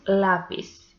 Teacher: this one is also llana because the penultimate syllable is the stressed one